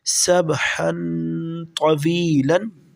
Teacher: طا جو ہے حروف اخفا میں سے ہے، یہاں پر ہم غنہ کے ساتھ پڑھیں گے۔ سبحن، طا زبر طا، واو یا زیر وی، طوی، لام دو زبر لن، طویلن، سبحن طویلن۔